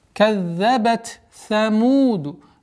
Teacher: Нужно договорить звук та, а потом перейти на звук са.